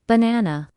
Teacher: in the word banana, the stress is on the second syllable, banana. If you put the stress in the wrong place, it can sound strange, even if your pronunciation of the letters is correct.